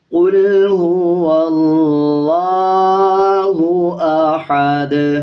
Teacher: جب وقف کریں گے تو دونوں پیش کو سائلنٹ کر دیں گے اور دال کی آواز کو آدھا پڑھا جائے گا اور قلقلہ کیا جائے گا۔